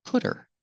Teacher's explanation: it's between vowels it's between vowels because the H is silent the H is silent because it's not an important word it's not a stressed word